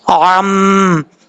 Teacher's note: عین کو پڑھتے وقت آپ نے اس چیز کا خاص خیال رکھنا ہے کہ عین کو حمزہ کی آواز نہیں نکالنی چاہیے